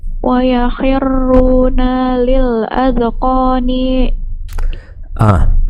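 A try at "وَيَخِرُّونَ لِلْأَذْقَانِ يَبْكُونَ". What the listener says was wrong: Akhir ayatnya, maaf, akhir hurufnya jangan dipanjangin kalau nggak panjang. Wa yakhirruna lil adqani yabkun.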